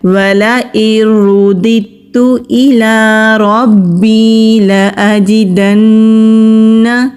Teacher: را کو موٹا پڑھیں گی کیونکہ را کے اوپر زبر ہے۔